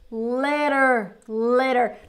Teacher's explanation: the t is going to turn into an R